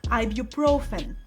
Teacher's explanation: This one has a few tricky spots, but a common one is stressing the wrong syllable. The stress is on the third syllable, ibuprofen.